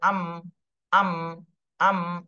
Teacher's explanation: মিমটা উচ্চারণ হয় দুই ঠোঁটের শুকনা অংশ থেকে। তাহলে হামজা জবর আ, আ তো বলতে হবে, কিন্তু আ বলার সাথে সাথে দুই ঠোঁটের শুকনা অংশে ঠোঁটটা মিলে যাবে, আম, আম, আম, এইভাবে।